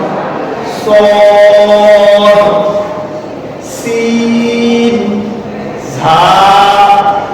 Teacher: এরপরে স সি ঝা, একটু যদি আমরা তাকাই, এই হরফগুলো জিহ্বার অগ্রভাগ ও সামনের নিচে দুই দাঁতের মাথা, এই যে দুই দাঁতের মাথা এবং উপরে দাঁতের সামান্য অংশ মিলে উচ্চারণ হালকা ভাবে স সিন ঝা, খুব সহজ করে উচ্চারণ করতে, অনেক শক্ত ভাবে না, কঠিন ভাবে না।